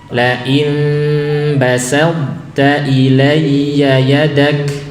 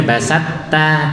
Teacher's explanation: masih menyisakan sifat to, yaitu sifat itbaq atau sifat isti'la'nya ya.